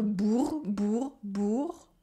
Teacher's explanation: The first one is bourg with the ou sound and a French R